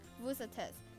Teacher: because the word after vous starts with a vowel, so the S sound at the end of vous is heard